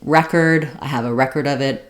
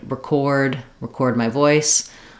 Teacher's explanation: the noun is stressed on the first syllable and the verb is stressed on the second syllable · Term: noun and verb stress